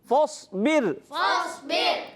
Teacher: صاد موٹا کریں گے را کو باریک